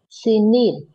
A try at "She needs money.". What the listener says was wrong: Thiếu s.